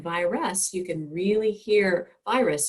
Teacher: you can really hear the u sound clearly there so that r isn't really influencing that vowel sound